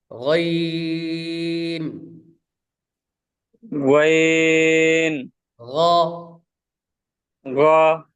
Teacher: গইন খ গইন, খ, খ গইন, খ, এই দুটা লেটার উচ্চারণ হবে হলকের শেষ ভাগ থেকে।